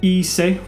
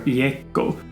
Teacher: the long vowels e and u diphthongize to become ie and uo. We have an example that we looked at in the last video, ise, which means bed, which has the genitive singular iecco, where e has bent to become the diphthong ie. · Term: vowel bending